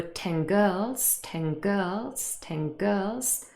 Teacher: And if we say it fast, there were 10 girls, 10 girls, 10 girls. The n has changed into ng as well.